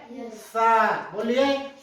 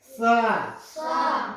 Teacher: दंतव्य बोलते हैं। दंतव्य इसलिए बोलते हैं क्योंकि हमारे जीभ जो है नीचे दांत को छूती है और स का उच्चारण निकालती है। वो दांत जीभ जो है ऊपर नहीं उठती।